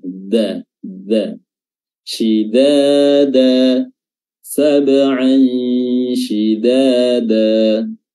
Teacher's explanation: Padahal bukan da seperti itu yang dimaksud dalam bahasa Arab atau Al-Quran. Da yang dimaksud adalah dal yang bertemu dengan gigi bagian depan, bagian belakang, gigi atas bagian belakang